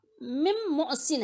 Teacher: نون ساکن کے بعد اگر میم آ جائے تو نون نہیں پڑھا جاتا، میم کو میم میں مدغم کر دیتے، یہ نون جو ہے میم بن جائے گا، ٹھیک ہے، اس طرح پڑھیں گے۔ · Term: غنہ مع الادغام